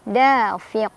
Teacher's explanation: Da fiq ada qalqalah kubro karena ada huruf qalqalah yang sukunnya karena berhenti membaca ya, bukan sukun asli. Tadinya qafnya harokatnya tanwin kasrah karena berhenti jadi sukun. Jadilah dia dipantulinnya lebih besar.